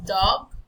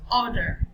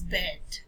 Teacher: to describe the sound D, we describe it as the voiced alveolar sound